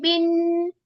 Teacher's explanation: नून के ऊपर जब तशदीद आ रही है ना तो इसको टू काउंट्स गुना करना है।